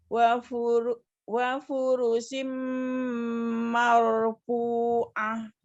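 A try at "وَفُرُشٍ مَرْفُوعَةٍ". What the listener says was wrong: Ya, wa-nya mau nyongkat dulu ya, pengucapan huruf waw-nya biar jelas ya, tidak wa furushim marfu'ah.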